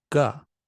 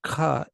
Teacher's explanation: the ga is holding a little bit longer than the ka. That's what makes it thicker and juicier.